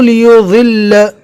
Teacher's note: ضد کو پڑھتے ہوئے ہلکی سی دال کی آواز آئے گی، اور اگر کوئی پڑھتا ہے دال کی شکل میں لیضل تو دونوں پڑھنا صحیح ہے، ہم اس سے پہلے بھی بتا چکے ہیں۔